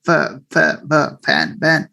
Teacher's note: the sounds pha and bha are labiodental sounds in English · to lips involve हुन्छ बाइलिबल sound जस्तो तर exactly in English lower lip and upper front teeth lower lip तल्लो ओठ माथिको दाँत यसरी उच्चारण हुन्छ